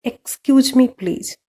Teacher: जब मैं एक्सक्यूज मी बोल हूँ तो मेरा टोन नीचे है, पर मैं जब प्लीज बोल रही हूँ मेरा टोन थोड़ा ऊपर हो गया है। राइजिंग मतलब क्या, धीरे धीरे आपका वॉइस बढ़ता है।